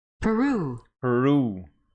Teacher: the stress falls on the second syllable making it per Peru and here between the two syllables there